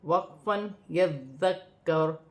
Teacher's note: وقف کی صورت میں پیش گر جائے گی، را ساکن ہو جائے گی